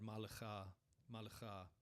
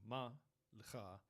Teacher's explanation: But it is a a feature of the diacritics of the Masoretic text of the Tiberian Masoretes, and so it's there, and they put it in presumably to bring attention to to the word and how it's to be read, probably as if it were one word, malecha, malecha, okay, as opposed to ma lecha, and so we would call that conjunctive dagesh.